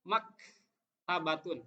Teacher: mak harus ada sedikit pecah, hames itu pecah, udara mengalir sedikit. Mak tabatun, mak tidak boleh mak tabatun, nggak boleh karena itu jadi berhenti.